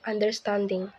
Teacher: in the word understanding the primary stress is on the third syllable and the secondary stress is on the first syllable